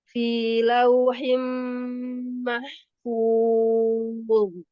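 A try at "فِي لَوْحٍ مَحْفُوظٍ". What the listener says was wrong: Fi dijelaskan fi lauhi. Untuk fi jangan dinaikkan. Untuk awalannya fi lauhim mahfuz.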